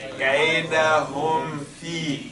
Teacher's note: Because the meme and the fa, they come close to one another when it comes to the exit, right? The meme comes from the two lips, and the fa comes from the lower lips and the upper teeth.